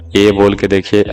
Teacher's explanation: कंठ और तालु दोनों का इसमें उपयोग होता है। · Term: कंठ तालव